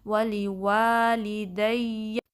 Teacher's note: اس میں وا جو سیکنڈ وا ہے اس کو 2 کاؤنٹ اسٹریچ کرنا ہے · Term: الف مدہ